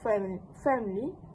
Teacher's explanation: the participants retain the schwa sound between m and l sounds producing a three syllables version of family